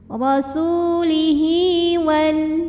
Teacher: ada H damir diapit dua huruf hidup huruf setelahnya selain Hamzah maka h damir ini kita panjangkan dua harakat